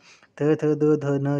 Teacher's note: ट ठ ड ढ न जो है वो मूर्धा उच्चारण स्थान है इनका, मूर्धन्य वर्ण नाम है इनका। थ थ द ध न जो है वो आपके उच्चारण स्थान जो है वो दांत है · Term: दंत्य वर्ण